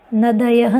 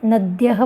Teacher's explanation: नदयः नहीं बोलना है, नद्यः बोलना है, क्योंकि यहाँ पर दकार हलंत है।